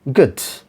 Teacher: Ga sound is a consonant sound, velar consonant, ga sound.